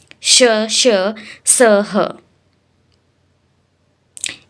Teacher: श, श, स, ह ये संघर्षी व्यंजन है, जिसमें संघर्ष थोड़ा सा करना पड़ रहा है बोलने में